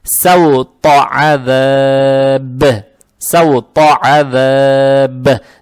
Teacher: «та» здесь стоит, она же твердая, поэтому фатха приобретает оттенок «о». Фатху ни в коем случае не должны тянуть, и сразу сюда переходим.